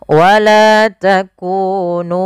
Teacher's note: mim mati bertemu dengan wau yaitu izhar syafawi yang di mana harus dibaca dengan jelas suara mimnya dan tidak boleh ditahan